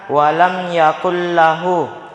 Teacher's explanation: cara membacanya melebur masuk tanpa dengung. Jadi jangan didengungkan. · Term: idgham bila gunnah